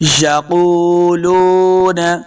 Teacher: دیکھیں قاف کلرفل آپ کو نظر آ رہا ہے، تو اس قاف کو ہم نے موٹا پڑھنا ہے کیونکہ حروف مستعلیہ سے ہے۔ یقولون، قاف پیش واو قو، لام پیش واو لو، یہ واو مدہ ہیں تو ہم نے اس کو دو حرکات لمبا کر کے پڑھنا ہے۔